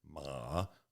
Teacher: Third tone, the dipping tone. She said, as you say it, ma, lower your chin, and you'll get it.